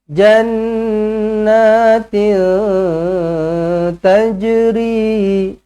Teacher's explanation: tanwin tak selari bertemu dengan ta, ikhfa hakiki, dengungkan 2 harakat.